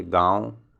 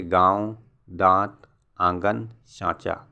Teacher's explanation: ऐसे स्वर का उच्चारण नाक और मुंह से होता है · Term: अनुनासिक